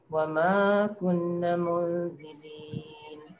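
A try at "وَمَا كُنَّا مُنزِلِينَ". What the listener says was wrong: كُنَّ dia, na dia panjang sikit. Ada alif.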